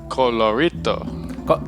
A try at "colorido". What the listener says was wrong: With a D. Colorido.